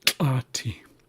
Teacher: it's an ejective sound which means it's more forceful or maybe kind of explosive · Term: ejective barred lambda